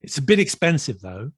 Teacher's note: Usually the though has like a rising tone.